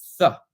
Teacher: a th sound with the tongue going kind of to the back of your teeth and breathing through it, so that you can elongate.